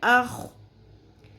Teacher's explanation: خو میں خراش کی آواز آنی چاہیے، کھردری آواز ہوتی ہے